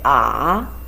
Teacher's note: for the third tongue it has a change from the beginning the voice a little bit high and it goes down again goes up